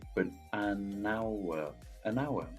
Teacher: By linking that N sound of an to the starting vowel sound of the following word